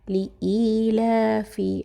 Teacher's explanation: حمزہ اور یا ملائیں گے، تھوڑا سا اس کو کھینچیں گے ایک الف کے برابر۔ لإیلا، لام کے اوپر کھڑا زبر ہے۔